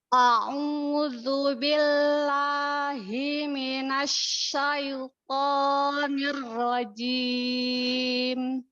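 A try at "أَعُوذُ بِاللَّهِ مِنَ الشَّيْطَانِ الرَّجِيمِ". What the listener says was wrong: lamnya mau turun lagi suaranya tidak naik pangkal lidahnya ketika membuka hati-hati pangkal lidah nya di Lam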